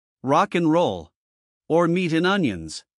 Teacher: dropping the D sound helps the words connect more smoothly